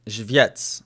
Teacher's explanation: I'm accenting the first syllable.